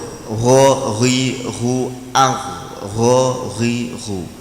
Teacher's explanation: Kalau ho tidak boleh ada ngoroknya.